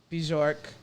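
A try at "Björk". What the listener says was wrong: It's just York. B is silent.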